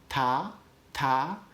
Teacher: If you put your tongue just against your teeth, like ta, ta, that's a dental stop. Alveolar is just behind your teeth.